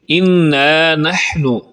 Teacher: اِنَّا پہ نون پر شد ہے اس لیے یہاں پر غنہ کریں گے، اور نحن کو نانو نہیں پڑھیں گے بلکہ نحن صحیح انداز میں پڑھیں گے۔